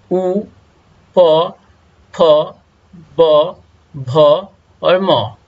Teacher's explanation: So these, while you are going to pronounce these letters, your lips touch to each other. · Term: लेवियल